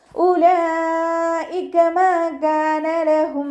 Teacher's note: മദ്ദക്ഷരത്തിന് ശേഷം അതേ വേർഡിൽ തന്നെയാണ് ഹംസ വന്നിട്ടുള്ളത്. മദ് വാജിബ് മുത്തസിലാണ്. നിർബന്ധമായിട്ടും 4 5 കൗണ്ട് നീട്ടിക്കൊടുക്കണം.